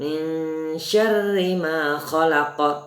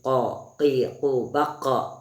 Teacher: huruf terakhirnya huruf qaf, qalqalah, dan qalqalahnya kubra tebal. Qafnya ditebelin, ko, qi, ku, baqa, qalqalah dan tebal kubra.